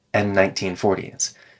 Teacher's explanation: cars from the 1930s and 1940s 19 starts with an N so the and loses its D sound and connects the two n sounds together